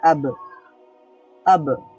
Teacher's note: ব এর পরে একটা আ সাউন্ড ছিল সেরকম আর কিছু থাকবে না শুধু ব সাউন্ডটাই হবে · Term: সুকুন